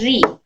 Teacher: یہاں پر رو کو موٹا پڑھنا ہے کیونکہ اس پر فتحہ ہے، اور یہ والی رو کو رو کے نیچے کسرہ ہے، باریک پڑھنا ہے. رو زیر ری.